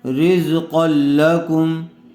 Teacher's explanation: قاف کے اوپر تنوین ہے اور تنوین کے بعد حروف یرملون میں سے لام آیا ہوا ہے، اس لیے بغیر غننے کے ملا کر پڑھیں گے۔ رزقل، لام زبر لا، رزقل۔ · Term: ادغام لام